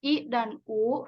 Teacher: secara vertikal dibedakan dengan adanya vokal tinggi yaitu I dan u vokal Tengah E dan dan vokal rendah